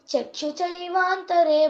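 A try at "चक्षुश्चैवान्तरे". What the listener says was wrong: చ కి చావత్తు లాగా పలకకూడదు ష కి చవత్తు పలకాలి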